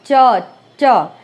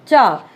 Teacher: तालव्य व्यंजन, जैसा कि कंठ से थोड़ा सा ऊपर आ जाएंगे अब हम, है ना। उच्चारण करते समय जीवा अग्र कठोर तालु को स्पर्श करता है।